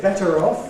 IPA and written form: ˈbetər ˈɒf (better off)